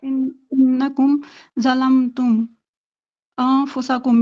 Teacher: اکفا ہوگا، مطلب نون کی آواز کو چھپائیں گے